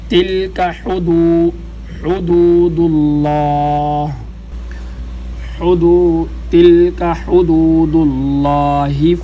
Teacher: ہا یہ گلے کے درمیان سے، ہا اور عین ان دونوں کا ایک ہی مخرج ہے